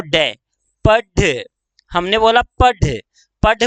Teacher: पढ़ बोला तो एकदम नीचे की तरफ जीभ आई है